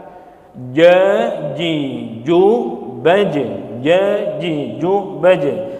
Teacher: punggung dari lidahnya bersentuhan dengan langit-langit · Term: tanpa desis